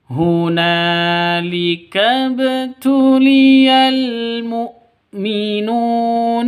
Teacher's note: Mukminuna nu panjang dua ketukan karena ada wau mati diawali dengan dommah. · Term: mad thbi'i, mad tabi'i